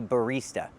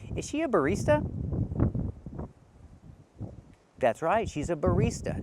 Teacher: It's the stressed syllable, use the long E, barista. She's a barista.